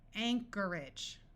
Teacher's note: rather than having a clear long a sound and sounding like age tends to take on an edge sound · notice that the o r takes on a muffled R sound